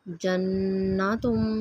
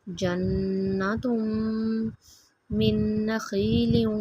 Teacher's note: نون مشدد پہ غنہ کریں گے